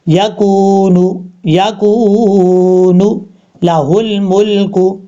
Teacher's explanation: اب اس کے بعد یکون لہ الملک علینا، کاف کے بعد واو مدہ ہے، ایک الف کی مقدار لمبا کر کے پڑھیں گے